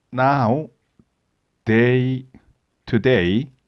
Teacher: the n which is the sound of your tongue touching your upper gums